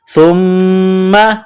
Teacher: سا کو باریک کرنا ہے، سا کو میم کے ساتھ ملانا ہے ، میم مشدد ہے تو یہاں آواز ناک میں چھپائیں گے،